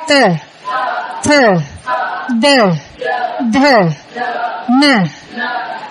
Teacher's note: Có âm răng á, là khi mình đọc á, cái lưỡi mình đưa ra đụng cái răng trước và mình đánh xuống